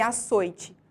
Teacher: Em açoite, a sílaba mais forte é soi, portanto, açoite é uma palavra paroxítona.